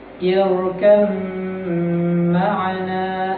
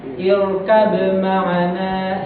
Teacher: itu dibaca dengan mengidghamkan ba ke huruf mim